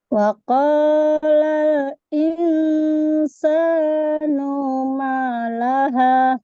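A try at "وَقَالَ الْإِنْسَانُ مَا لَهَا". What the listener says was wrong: Nah, no-nya kepanjangan. Numa langsung. Ya, hati-hati.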